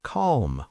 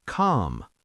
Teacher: Americans often pronounce the L in these words, but in British English, it's often silent. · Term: silent L